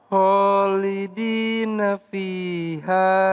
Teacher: Khalidina khnya dibaca panjang, dalnya dibaca panjang dan kemudian ee fi-nya juga dibaca panjang